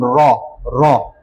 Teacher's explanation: র কেন কম্পন জাত কারণ হচ্ছে কম্পন র র এটা কাঁপাকাপি করে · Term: কম্পন জাত বর্ণ